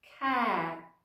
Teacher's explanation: ніби звук ти взагалі зникає